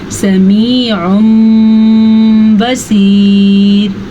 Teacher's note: उस तनवीन को या नून साकिन को मीम में बदल देते हैं। इसको पढ़ने का क्या तरीका होता है, समीउम बसीर। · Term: इक़लाब